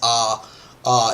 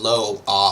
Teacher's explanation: should note that this ah is to my understanding right now kind of fluid between front and back it is just a generic ah low ah sound um i say generic it is just within that range um